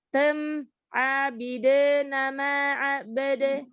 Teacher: ketika kita tidak memonyongkan kedua bibir, jadi kedengarannya tem